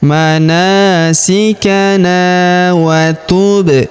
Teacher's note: huruf ba berharokat sukun kita pantulkan atau kita qalqalahkan